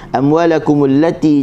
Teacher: rumah dia hujung lidah digusi. Ti tanpa ada angin.